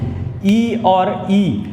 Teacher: आप ई और ई उच्चारित करिए अपने मुख द्वार से, तो वहाँ से जो वायु है वह तालु में प्रेशर मारेगी और रगड़ खाकर बाहर ई की ध्वनि सुनाई देगी